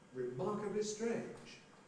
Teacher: because remarkably has unstressed at the beginning, that means there's got to be a prehead